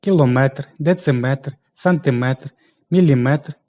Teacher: якщо частинка метр означає одиницю вимірювання то наголос пада на е